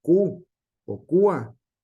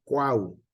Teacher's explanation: se pronuncian tres vocales en una fila en una sola sílaba